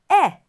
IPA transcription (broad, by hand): e